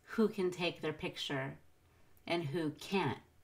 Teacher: emphasize can't at the end of the sentence because it's a negative, but we will not emphasize the can in the middle of the sentence.